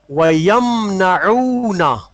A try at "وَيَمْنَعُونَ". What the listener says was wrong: عین کے ساتھ یہ عین لکھا ہوا ہے